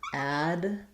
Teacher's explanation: with first syllable stress, I'm going to have the a vowel, Adventist, which is going to sound like a clear ad. And then because I'm stressing on the first syllable, my ven syllable is going to be more like vin, or just even vin, Adventist.